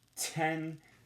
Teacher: there's a puff of air coming out of your mouth at the beginning of that word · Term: aspirated